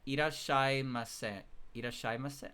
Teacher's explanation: You're holding on to the sh sound for a bit before actually saying sha.